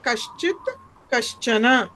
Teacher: కః అని వచ్చినప్పుడు విసర్గ స్థానంలో శకారం వస్తుంది.